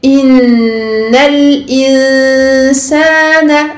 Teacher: À ce moment-là, il y a fusion, idgham bi ghunna, et la ghunna ici de nun mushaddada et mim mushaddada, c'est ghunna akmal ma takoun au plus long de sa durée